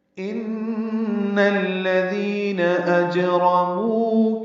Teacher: ان میں نون مشدد ہے، یہ غنہ ہے، اس کی زبر کو الذین کے لام سے ملانا ہے، دال نرمی سے پڑھنا ہے، 2 حرکات لمبا کرنا ہے.